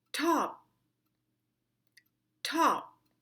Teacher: And with words that end with the letter P, mark the letter P by closing your lips, but don't produce a sound. No pop nor puff.